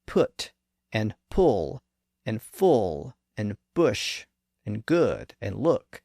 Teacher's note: the first and more traditional short u sound appears to be a literal short version of the long ooh sound that we just looked at it's the uh sound in words